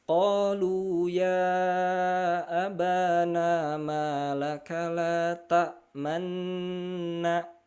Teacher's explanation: Manna ada tahanan 1 2 3. Tahan dulu 2 ketukan, tek tek masuk huruf berikutnya ketiga. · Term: gunnah